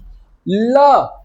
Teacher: Bend करने के बाद आप देखो साउंड जो होती है वो आपका किनारों से निकलती है। एजेस से निकलती है। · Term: पार्श्व